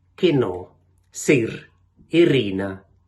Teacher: и який вимовляється більш закрито ніж у решті діалектів